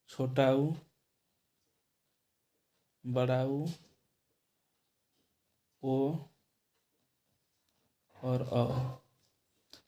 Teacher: इनके उच्चारण में मुख गोल आकार ले लेता है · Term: वृत्ताकार